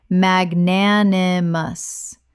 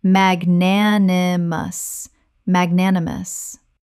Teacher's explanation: Four syllables with the stress on the second, meaning generous or forgiving.